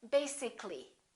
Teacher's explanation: syllables if we add a ll Y we don't say basically this a disappears so the a is not pronounced